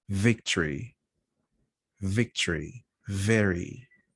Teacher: lip you let the air pass that's an f fine fish with a v you need to make a vibration same point of articulation uh upper front teeth and lower lip but you make a vibration